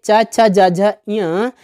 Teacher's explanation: इनका उच्चारण करते समय जीभ जो होती है वह ताल को स्पर्श करती है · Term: तालव्य वर्ण